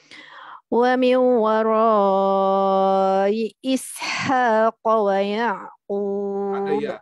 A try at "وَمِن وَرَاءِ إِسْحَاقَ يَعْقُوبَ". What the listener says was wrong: Ada waw.